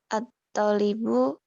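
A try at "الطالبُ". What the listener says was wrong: Panjang talibu.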